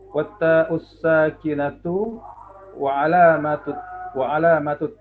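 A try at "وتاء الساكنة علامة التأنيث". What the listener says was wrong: Tidak ada wa di situ. Tidak ada wa. Watta ussakinatu alamatut ta'nits.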